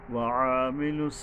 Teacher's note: আইন হলো গলা চেপে